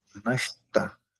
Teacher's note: A língua vai lá pro céu da boca e o T com ponto embaixo, a língua toca o céu da boca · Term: cacuminal